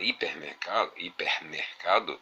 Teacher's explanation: na palavra hipermercado a sílaba tônica está no segundo elemento no caso mercado